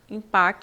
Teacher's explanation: esse M nasaliza a vogal in